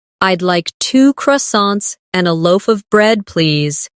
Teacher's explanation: In connected speech, loaf of sounds like loafa.